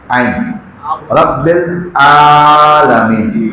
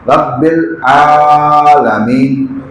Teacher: یہ جو عین ہے یہ بھی گلے کے درمیان سے